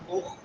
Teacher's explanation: خا حلق کے شروع والے حصے میں سے